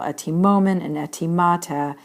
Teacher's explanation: Only in the first person plural and the second person plural, etimomen and etimata, does the accent fall on the contracted syllable.